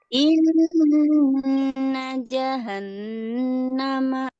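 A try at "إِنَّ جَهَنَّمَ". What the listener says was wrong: Sip, bagus.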